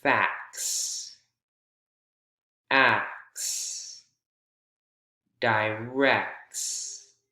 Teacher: when we add S or ES, the middle T or middle D sound goes away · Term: reduction